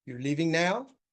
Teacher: So we have a rising tone for a question.